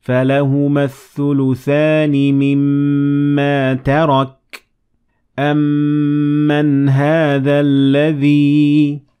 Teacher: Ghunna also applies to mim with shadda, since it is also a nasal sound